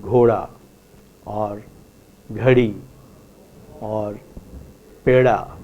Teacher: indic languages so that the the context is between two vowels between two vowels in hindi let us say you do not hear a duh · the voiced retroflex consonant da becomes a flap